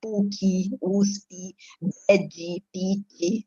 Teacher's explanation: Depois das consoantes mudas em final de sílaba também é um processo bastante interessante, porque a gente coloca aí o izinho